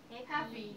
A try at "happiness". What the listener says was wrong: Happy지. Happy에다 뭐 넣는데 NESS 넣었잖아. 그럼 Happiness.